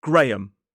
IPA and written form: ˈɡreɪəm (Graham)